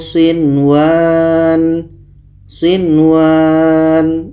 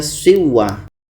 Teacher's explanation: Ini izhar wajib. Maka izhar wajib adalah nun jelas, waw jelas, dan tidak boleh dengung.